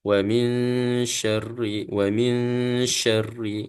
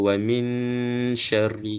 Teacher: Nun bertemu dengan syim dia ada hukum iaitu hukum ikhfa Hakiki jadi kita Cuba masuk dan sembunyikan kemudian kita dengung